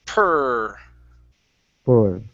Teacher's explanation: hold on to the R just a little bit. Okay, it sounds like this.